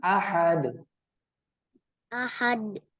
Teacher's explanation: pada kalimah Ahad nah Qalqalah kubranya mesti ee diperjelas